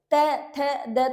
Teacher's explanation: कहीं ना कहीं वो जीभ दांतों के साथ टच हो रही है। तो ये दंत्या आ गया।